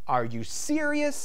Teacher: As you can see, there's a rising intonation. It goes from low to high.